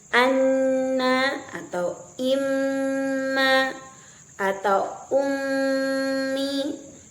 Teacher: Nun dan mim yang dalam kondisi bertasdid itu tergolong ke dalam susunan gunah yang pertama disebut dengan gunah Akmal yang dikeluarkan secara sempurna full dikeluarkan alirannya melalui rongga hidung kita · maka sempurna suara tersebut dikeluarkan melalui saluran rongga hidung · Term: gunnah akmal